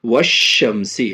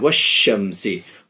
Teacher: الف اور لام دونوں سائلنٹ ہو رہا ہے، نہیں پڑھ رہے، صرف شینے ملا رہے ہیں، والشمسی۔ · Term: حروف شمسی